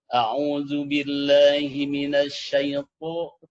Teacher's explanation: Ketika mengucapkan huruf to, karena to itu bukan dari syafatain, maka bibirnya tidak usah ikut-ikutan